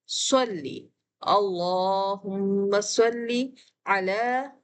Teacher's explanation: لام کھڑی زبر کے ساتھ ہے، ون فنگر کھینچتے ہیں ، یہاں یا لکھا ہوا ضرور ہے لیکن یہ پڑھا نہیں